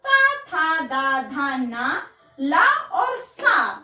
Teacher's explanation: ता था दा धा ना ला और सा हमारे दांतों में आते हैं बोलने के आधार पर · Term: दंत वर्ग